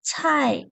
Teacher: Rồi, tiếp theo mình có từ chai, chai thì ở đây các bạn chú ý cho cô chữ C đọc như thế nào. Bật hơi, thẳng lưỡi bật hơi